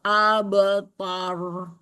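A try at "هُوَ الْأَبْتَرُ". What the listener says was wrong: Tadi ketebal. Tanya juga ikutan tebal. Jadi terbaca huwal abtar. Ah, bukan ta dia. Abtar.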